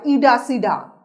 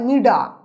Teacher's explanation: এই শব্দটুকে এভাবে বলে তারা যারা বঙ্গালি উপভাষায় অভ্যস্ত অপরের বৈশিষ্ট্য শব্দ মধ্যস্থ ট এবং ঠ ধ্বনি ড ধ্বনিতে পরিণত হয় অর্থাৎ এটা সেটা বাঙালি উপভাষায় বলা হয় ইডাসিডা মিঠা বা মিষ্টি